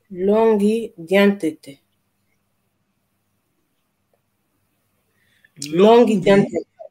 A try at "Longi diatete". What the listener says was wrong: Diatete. Não, diantete não. Longi diatete. Dia não, dia. Longi diatete. Longi diatete. Diatete. Longi diatete. Longi diatete. Diatete.